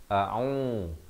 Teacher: ain berbaris dhammah di pertengahan kerongkong 2 harakat